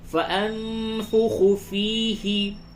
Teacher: نون ساکن کے بعد فا ہے، اخفا کیجئے